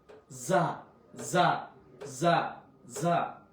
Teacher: জা একটু শক্ত হবে জিহ্বার একটু সামনে থেকে